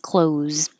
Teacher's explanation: Forget the TH, it's just, and forget the S, because it just sounds like a Z